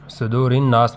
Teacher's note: صدور الناس میں را کو باریک پڑھیں گے، را کے نیچے زیر ہے